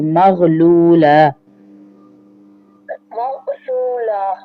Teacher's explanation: یہ غین ہے غین، اور یا کو کھینچیں گے بھی نہیں. مغلولہ مغ تو تے کی آواز نہیں آئے گی.